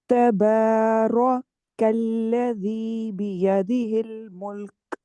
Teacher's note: کریں گی، کاف موٹا نہیں کریں گی، دیکھیں را پور کر کے فوراً کاف باریک ہوگا